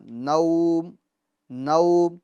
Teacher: کے زبر کے بعد جو واو آ رہا ہے، واو ساکین، جیسے آپ نون پڑھ لیں اس کے فوراً بعد جب واو کی پڑھنے کی باری آئے آپ ہونٹوں کو گول کر لیں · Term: معروف